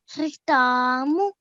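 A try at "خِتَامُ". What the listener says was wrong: Okay, so you're saying ta. If you say ta, But if you smile, the sound tends to come out easier. Khitamu.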